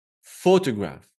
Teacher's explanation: If it's the word photograph, you stress the first syllable. This means you make it a little bit longer and louder.